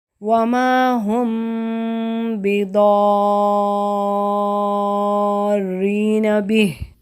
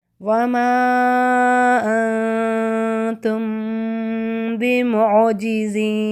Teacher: اگلے ورڈ کو دیکھیں، وَمَا أَنْتُمْ بِمُعْجِزِينَ، ٹھیک ہے، ادھر بھی میم اور با کے درمیان غنہ کیا، یعنی اخفاء کرتے ہوئے ہم غنہ کر رہے ہیں، میم کو غنہ کے ساتھ چھپا رہے ہیں، تو اس کو اخفاء شفویہ یا اخفاء شفوی کہتے ہیں۔